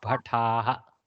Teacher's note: Not Takara Mahaprana, Takara Alpaprana.